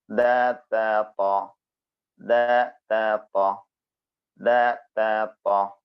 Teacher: മൂന്നിന്റെയും മഹ്റജ് ഒന്നാണ് താ ഉച്ചരിക്കുമ്പോൾ ചെറിയ വ്യത്യാസം നമുക്ക് അനുഭവപ്പെടുന്നുണ്ടാവും